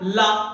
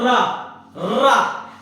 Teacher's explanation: जब रा बोलोगे तो जीभ वाइब्रेट करेगी। बोलो ला, ला, ला में कोई वाइब्रेशन नहीं है, ला में कोई वाइब्रेशन नहीं है। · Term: प्रकंपित